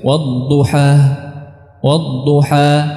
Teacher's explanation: a ada Hamzah di akhirnya ya wadduha ini tidak tepat ya Jadi kita tidak menambahkan Hamzah di akhirnya kita menghabiskannya nya bukan dengan me nutup [Musik] ee apa pitas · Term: huruf-huruf Mad